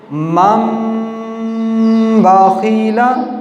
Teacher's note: اس نون کو میم سے بدل کر پڑھیں گے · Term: اقلاب